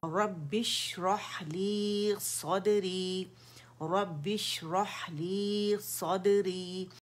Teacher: रॉ मुखफ़्फ़म है, मोटाई से पढ़ेंगे, बा मुशद्दद है